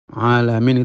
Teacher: maka yang keluar itu Ya gak jelas antara Ain dengan Hamzah Ain itu memiliki sifat tawassut yaitu mengalirnya suara itu tengah-tengah jadi kita mengucapkan alamin itu a a bukan a tidak tapi